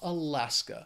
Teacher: so I'll let you know the next state is Alaska it has three syllables the stresses on that second syllable that final syllable just has that schah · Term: schwa